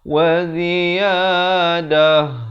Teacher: ta marbutah itu ta simpul ditukarkan kepada bunyi ha dan diberikan tanda mati mendatang, tanda sukun ya, ataupun tanda mati, tetapi bukan yang mati asli, mati mendatang.